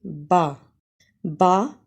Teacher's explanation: बा होठों के तरी वाले हिस्से से निकलता है यानी दोनों होठों के जो तरी वाले हिस्से हैं वहां से हम बा को अदा करते हैं